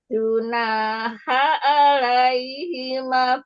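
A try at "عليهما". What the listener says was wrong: Alaihimanya, manya matobi'i jangan kepanjangan yang di ini disamain sama yang lain.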